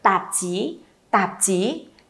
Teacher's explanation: âm đầu thẳng lưỡi, âm sau cong lưỡi nhá